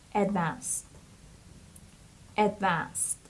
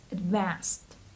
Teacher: user experience and the next word is advanced advanced this stress the stress is on the second syllable so it's Advanced and the Ed here we pronounce it like T